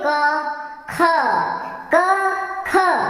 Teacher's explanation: तो क में जितना हवा मुंह से निकल रहा है उससे ज्यादा हवा जो है वायु वो ख के बोलने में बाहर आ रही है